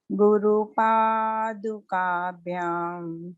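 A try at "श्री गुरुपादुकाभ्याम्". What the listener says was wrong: Wonderful. How beautiful you have chanted, Amma. Why are you hesitating? Nicely chanted.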